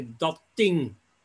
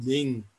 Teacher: the voiceless sound of the first word imposes itself on the originally voiced sound of the second word